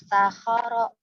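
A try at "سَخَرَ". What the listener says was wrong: Ujung lidahnya jangan lupa. Sakhoro. Meskipun nggak kelihatan lidahnya tapi kedengeran. Kalau ketika mengucapkan huruf sa atau za itu lidahnya keluar atau enggak itu beda suaranya kedengeran.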